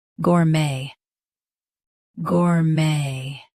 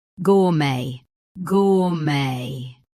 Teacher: US uses gore. UK uses gaw. Keep may the same.